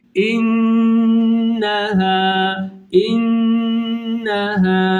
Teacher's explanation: nunun burundan genizden çıkma özelliği